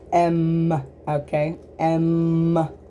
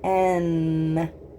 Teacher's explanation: So it sounds similar, but with M, our lips are touching. With N, your lips don't touch at all. You make the sound by touching your tongue almost completely to the roof of your mouth in the front.